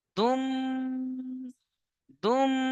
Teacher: তানবিনকে মিমের সাথে মিলিয়ে একালিফ গুন্না সহ পড়তে হবে। যেমন দুম, দুম, এইভাবে পড়তে হবে।